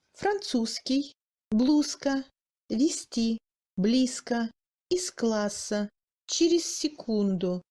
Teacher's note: Devant une consonne sourde, le Z sonore adopte sa sourdité.